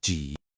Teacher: Notice it also has that dipping third tone